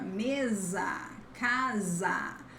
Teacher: We have the S between vowels. Then the sound is like Z in zebra